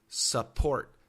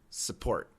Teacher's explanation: when we make the short U sound, you should move your jaw down. Support. When we make the schwa sound, we don't move the jaw, but the sound is very similar.